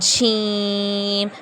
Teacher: اسے ہم 5 الف کی مقدار کے برابر کھینچ کر پڑھیں گے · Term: مد